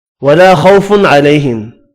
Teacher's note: خوا پر پڑھنا ہے، تنوین کا اظہار ہوگا، خو واو لین ہے